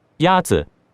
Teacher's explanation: The first tone is a high, level tone.